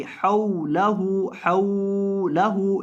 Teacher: واو کو لمبا نہیں کرنا، کیونکہ یہاں یہ جو واو ہے یہ مدہ کا نہیں ہے، یہ لین کا ہے